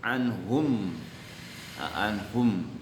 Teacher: Idhar itu jelas, syafawi itu kedua bibir. Jadi kedua bibir jelas membaca mimnya ya. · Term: idhar syafawi